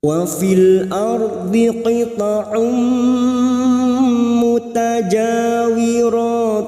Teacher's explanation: bertemunya nun sukun dengan huruf wau dibaca jelas tanpa mendengung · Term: Idhar mutlak